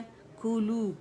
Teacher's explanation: कू पे complete rolling होगी हमारी लिप्स की